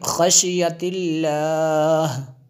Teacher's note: اللہ کو جو ہے ہم نے باریک پڑھا کیونکہ اس سے پہلے لفظ کے نیچے زیر ہے